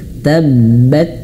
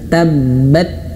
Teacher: huruf ta kalau dia sukun dia tertahan dan angin sedikit keluar